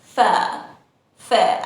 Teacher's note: In British English, we say fare, fare, and we don't pronounce the R sound.